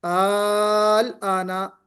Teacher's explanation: الآنا میں جو دوسرا حمزہ ہے اس کو ہم نے الف سے یعنی حرف مدہ سے بدل دیا